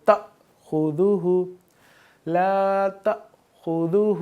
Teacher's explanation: جہاں حمزہ کے اوپر جزم ہوگا تو یہاں پہ اس کو ہم تھوڑا سا جھٹکا دے کر پڑھیں گے · ہم تھوڑا سا جھٹکا دے کر پڑھیں گے، تأخذہ لا تأخذہ، خا کو پر پڑھیں گے، دال میں سیٹی کی آواز نہیں آئے گی